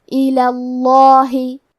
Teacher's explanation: کلمت ایلا کے آخری میں کیونکہ لام پہ زبر ہے لہذا ہمیں لفظ الجلالہ مطلب کلمت اللہ کے لام کو بھاری آواز میں پڑھنا ہے